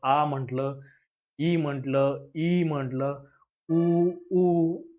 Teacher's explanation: आपली जीभ ही आपल्या तोंडामध्ये इकडे-तिकडे कुठेही स्पर्श करत नाही आणि आपले ओठ पण एकमेकांना स्पर्श करत नाहीत. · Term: स्वर